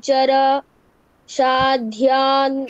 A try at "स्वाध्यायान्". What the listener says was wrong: শা নয় স্বা